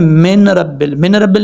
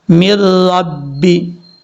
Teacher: میم کو را سے ملائیں گے، بیچ میں نون کو چھوڑ دیں گے